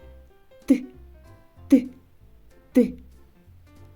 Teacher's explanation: зубки знаходяться у вільному положенні зубки збли Жені а не зімкнені а кінчик язика стукає за верхніми зубками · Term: звук Ти